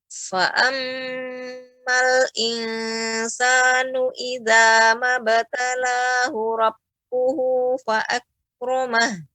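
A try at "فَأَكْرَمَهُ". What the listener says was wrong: Fa'ak, ya, lebih ditampakkan lagi. Sudah bagus, sudah bisa, namun harus fokus, kalau tidak nanti kembali lagi ya tidak ada hamznya.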